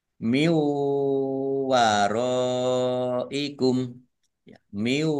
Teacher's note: Nun sukun bertemu dengan huruf wawu, idgham bi gunnah, masuk dengan mendengung, yaitu langsung masuk ke huruf wawu, ditandai wawunya ada tasdidnya dan mendengung ya ditahan 2 harokat.